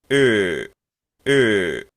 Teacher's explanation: podríamos decir que esto suena como una especie de E, pero como tirándole a una O. Por eso es que aquí nos han puesto esta como que fuese una O. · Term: la E redonda